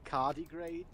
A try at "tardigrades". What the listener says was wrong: Tardigrades. Tardigrades. T. Tardigrades. Tardigrades.